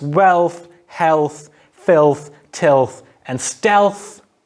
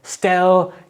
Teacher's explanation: say stealth and you stop in still you will feel that the tip of your tongue is actually pressing against the back of your front teeth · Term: velarized and dentalized